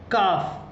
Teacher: زبان کی جڑ اور اوپر کے تالو کا سخت حصہ